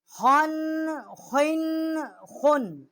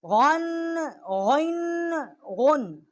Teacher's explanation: خا اور غین جو ہیں ادنائے حلق سے ان کا مخرج ہے جو منہ کی طرف والا حلق کا حصہ ہے وہاں سے یہ حروف ادا ہوتے ہیں